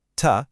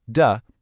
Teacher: It's the exact same mouth position. But T, ta, is a voiceless puff of air, while D, da, is voiced.